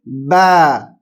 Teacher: تو با جو ہے باریک پڑھا جائے گا، شدت سے پڑھا جائے گا لیکن باریک